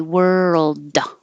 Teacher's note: So as you move from the R to the L, keep making sound world and hold it in the L position for a little longer than you think you need to so that the L can be heard, because you don't need to really pronounce the D and say world. You don't have to say duh. You can just hold it there.